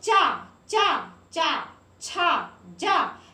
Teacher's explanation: तो आपकी जीभ जो है वो ताल को स्पर्श कर रही है। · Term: तालव्य